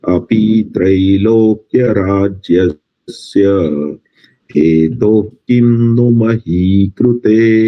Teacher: અપી થોડુંક લંબાયું છે અને મહી કૃતે એ દીર્ઘ થોડું ઓછું બોલાયું છે